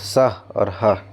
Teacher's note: अब देखना है हम लोग को उष्ण व्यंजन ठीक है उष्ण व्यंजन जो मतलब गर्म हवा निकलेगा घर्षण हो के निकलेगा